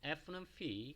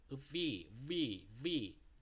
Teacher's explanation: 성대를 울려가면서 발음을 내주시면 좀 더 가까운 소리를 낼 수가 있습니다.